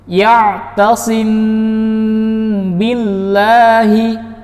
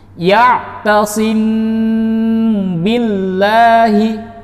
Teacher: Ikhfa syafawi adalah ketika mim sakinah atau mim sukun bertemu dengan huruf ba. Cara membacanya adalah sama dengan samar-samar, namun juga diikuti dengan dengung. Dengan kadar kesama-samaran dan kadar dengungnya 2 harokat atau 3 ketukan.